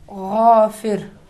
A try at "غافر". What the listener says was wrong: ماشاءاللہ.